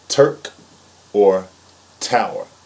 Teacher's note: your tongue is not flat and it's a very hard T